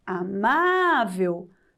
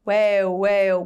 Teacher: parece o som de U, mas é o L. Uel, uel, quando faz esse som, termina com a letra L.